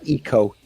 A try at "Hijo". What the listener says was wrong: Hijo. It's still not. There's no K. There's no C in there. Hijo. Con una J.